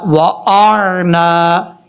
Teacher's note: یہاں پر حمزہ کو جب عین سے ملائیں گے تو حمزہ اور عین کو دونوں کو کلیئر کرنا ہے، حمزہ سختی سے پڑھا جاتا ہے، عین نارمل طریقے سے